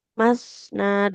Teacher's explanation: masna dengan ujung lidah yang ditempelkan ke ujung gigi seri yang atas